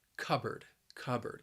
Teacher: And the word is also very confusing because when you see it, it looks like, well, it's spelled with two words, cup and board. But you're not going to pronounce that second syllable like board. It's just going to be bird